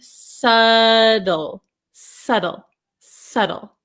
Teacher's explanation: So you could say subtle, subtle, but in American English, I'm from America, in American English, this T becomes a flap T.